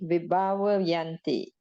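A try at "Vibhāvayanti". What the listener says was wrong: Where's the aspirate over here? H sound. Aspirate, we call it. so it's like without H. Vibhavayanti.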